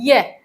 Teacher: है जो तालु है वो प्रभावित होता है इससे ठीक है जो जोर है वो किस पे पड़ता है तालु पे पड़ता है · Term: तालव्य